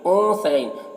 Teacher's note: نون میں اخفا ہوگا، نون کی آواز کو ناک میں چھپا کر پڑھیں گے.